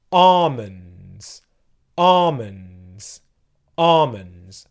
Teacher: the L sound so it would sound like this almonds almonds the first syllable it is where the stress is ah and in the second syllable it's the M sound the